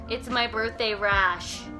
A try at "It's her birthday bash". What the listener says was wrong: Bash. Not it's rash.